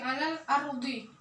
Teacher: alif lam dibaca jelas tanpa lebur ke dalam huruf alifnya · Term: alif lam qamariyah